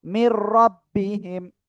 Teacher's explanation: ঠিক আছে, এবার আমরা আরেকটা বিষয় একটু যাই, যে নুন সাকিন বা তানউইনের পরে যদি র আর লাম আসে, এই যে ঈদগামে বেলাগুন্নার অক্ষর কয়টি, দুইটি, র আর লাম, তাহলে কি করব, গুন্না ছাড়া আমরা মিলায় পড়বো, কোনো গুন্না করা যাবে না